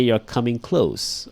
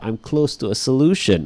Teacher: so it's voiceless when you say you're coming close or I'm close to a solution